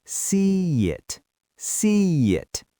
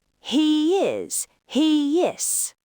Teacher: As your mouth moves from the wide E position to the relaxed I position, it naturally creates a Y sound. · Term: vowel to vowel linking